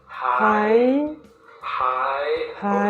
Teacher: Just going up, not coming back down. Don't drop your voice back down. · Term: high tone